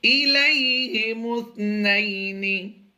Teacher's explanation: یہاں پر یا لین ہے، یہاں پر لمبا نہیں کریں گے